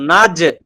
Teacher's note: তাহলে আমরা জিমকে শক্ত করব, নাজ নাজ শক্ত করব এবং কলকলা করব